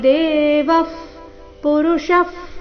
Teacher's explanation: ಎರಡು ಶಬ್ದಗಳ ಕೊನೆಗೆ ವಿಸರ್ಗ ಉಚ್ಚಾರಣೆ ಫ ರೀತಿ